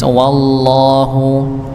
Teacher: Maka tetap lafaz Allah tebal iya, tapi wawunya tidak tebal. Nggih. Jadi dibaca tipis wallahu ya.